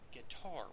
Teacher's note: a word like guitar, which has an iambic stress pattern, and the next word following is the word is, then infants behave as if they have parsed out the words gi and tar is, as opposed to guitar is.